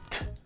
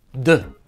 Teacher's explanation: Altre consonanti quasi identiche che si distinguono soltanto per l'attivazione o meno delle corde vocali sono T, D. La T è sorda, mentre la D è sonora.